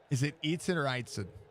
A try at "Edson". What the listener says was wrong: The I is silent.